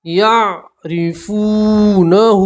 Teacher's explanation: را کو باریک پڑھیں گے را کے نیچے زیر ہے